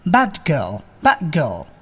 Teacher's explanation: এখানেও অ্যাসিমিলেশনের পরিবর্তে ইলিশন করাই ভালো, অর্থাৎ প্রথম শব্দটির শেষে d সাউন্ডটি গায়েব করে দিন